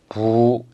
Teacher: 단모음 발음하듯이 부가 아니라 부 이렇게 길게 발음을 하시면 됩니다. 그래서 음가를 표시하면은 B 써주고 U 위에 직선을 이렇게 그어주시면 되겠습니다. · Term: 우의 장모음